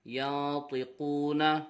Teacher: نون ساکن کے بعد حرف اخفا میں سے طا آ رہا ہے، اخفا ہوگا، غنہ کر کے پڑھیں گے